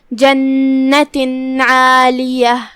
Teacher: ہم تنوین کو ظاہر کریں گے اور بغیر غنہ کے حکم کو ادا کریں گے، کیونکہ حکم الاظہار میں غنہ نہیں ہے.